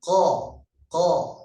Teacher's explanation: Kemudian qaf ini juga pangkal lidah ini lebih dekat dengan tenggorokan. Lebih dekat dengan tenggorokan.